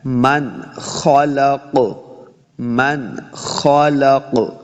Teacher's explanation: نون ساکن کے بعد پھر آگے خو آ گیا حروف خلقی سے، تو یہاں پہ اظہار کا قاعدہ ہے، یعنی بغیر غنہ کے پڑھنا ہے